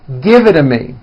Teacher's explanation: the only big change comes from the T's being pronounced as D's, and this happens because the T's fall between 2 vowel sounds. · when T's fall between 2 vowels, they become voiced and are pronounced as D's.